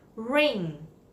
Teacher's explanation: of your tongue should touch the roof of your mouth then you need to push air through your nose